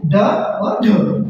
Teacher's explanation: जिनके उच्चारण में जीभ झटके से ऊपर नीचे होती है उन्हें बोलते हैं हम दृढ़ व्यंजन